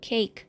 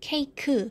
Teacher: in english is c-a-k-e and it falls in one syllable cake but in korean when you spell it it will become three syllables